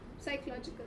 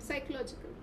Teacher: The P is not pronounced. It's silent.